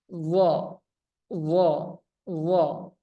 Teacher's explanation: isti'la, lidah bagian belakang naik, pangkal lidah naik.